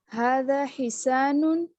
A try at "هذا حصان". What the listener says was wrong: هذا حصان. اور صوت کو بھی موٹا کریں. حصان. حسان سین نہیں ہے، صوت ہے حصان میں.